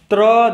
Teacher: त्र में जो हमारी जुबान है पहले हमारे दांतों से टकरा रही है, फिर उसके बाद आपका कंठ से बाकी आवाजें आ रही है, तो इसको बोला जाता है दंत मूर्धा।